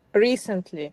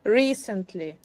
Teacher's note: a three syllable word with the Accent on the first syllable